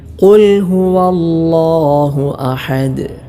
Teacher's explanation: നാവിൻ്റെ മുരടും അതിനോട് നേരിടുന്ന മേലെ അണ്ണാക്കും, അതാണ് ഖാഫിൻ്റെ മഖ്റജ്. ഇവിടെ ശ്രദ്ധിച്ചിട്ടില്ലെങ്കിൽ ഖാഫിന് പകരം കാഫായി പോകാൻ, മാറിപ്പോകാൻ സാധ്യതയുണ്ട്.